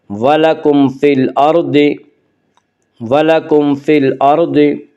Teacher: را ساکن سے پہلے زبر پیش ہے تو را ساکن کو پر پڑھا جائے گا